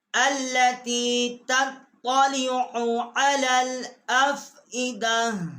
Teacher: تطلع کی عین جو ہے اس کو بھی حلق سے نکالنا ہے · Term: حروف حلقی